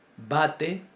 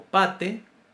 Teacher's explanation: para pronunciar una B, B, yo utilizo acción de las cuerdas vocales antes de pronunciar la consonante. Y para pronunciar una P, que es sorda, yo primero digo la consonante E, y después sale el sonido de la vocal. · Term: sonora